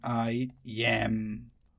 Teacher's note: I is unstressed while yam is stressed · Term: iamb